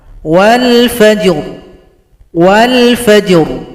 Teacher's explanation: Cara berhenti ra disukunkan, berikan bunyi vokal.